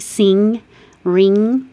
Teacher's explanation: the ng combination when the tongue goes very high in the back like sing ring you can feel the back of your tongue · The consonants M, N, ng, that N with a little hook on it is the NG combination when the tongue goes very high in the back